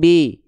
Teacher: Bunyi vokal i-nya enggak jelas jadinya b ya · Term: miring